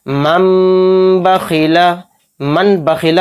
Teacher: نون ساکن کے بعد با آیا تو نون کو میم سے بدل کر غنہ اور اخفا کے ساتھ ہم اس کو پڑھیں گے، اس طرح سے من بخیلا، من بخیلا ایک دم اس کو نہیں پڑھیں گے اور نہ نون کو ظاہر کریں گے۔